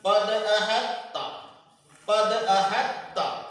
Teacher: تا کو تا میں ادغام کر کے پڑھا جائے گا